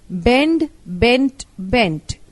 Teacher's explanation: change the D of the present into T in the past and the past participle. Bend, bent, bent, B-E-N-D, bend, B-E-N-T, bent, B-E-N-T, bent.